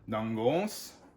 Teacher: So the emphasis is on the O